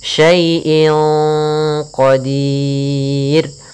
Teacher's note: Kemudian inqa ada kasratain atau kita namakan dengan tanwin an inun bertemu dengan qaf, maka kita namakan dengan ikhfa. Cara membacanya samarkan kepada qaf, dan qaf termasuk huruf tebal, maka ikhfanya agak ditebalkan.